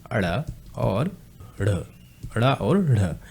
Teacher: अब उच्छिप्त व्यंजन होते कौन कौन से हैं, जिन वर्णों के उच्चारण में जीभ हमारी जिह्वा ऊपर उठकर झटके के साथ टकरा कर नीचे आती, उसे हम उच्छिप्त व्यंजन कहते हैं।